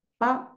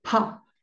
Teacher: esta B larga va a ser como una P y la P, que está escrita como nuestra P, va a ser como una P, pero sacando aire